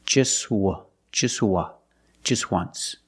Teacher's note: phonetically the t is between consonants so it's silent